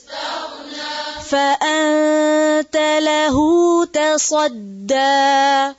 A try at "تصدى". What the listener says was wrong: ادھر بھی تا اور دال کو موٹا نہیں کرنا، صرف اور صرف صاد کو موٹا کریں گے.